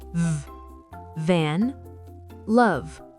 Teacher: le son V est la version sonore du F comme le moteur d'une voiture.